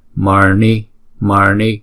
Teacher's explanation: chữ N này phải uốn cong lưỡi lại và búng ra.